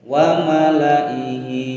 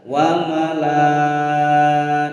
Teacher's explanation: Alifnya dianggap tidak ada. Dibaca wa malaihi. Lanya pendek saja.